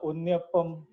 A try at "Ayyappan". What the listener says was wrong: Ayyappan, not Pum.